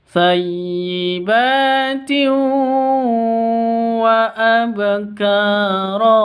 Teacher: Tanwin bertemu dengan wawu, masuk dengan dengung karena idgham bi gunnah. Jadi cara bacanya didengungkan 2 harokat atau 2 ketuk, 3 ketuk dengan huruf wawunya.